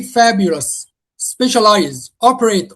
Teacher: All of them we stress the first syllable.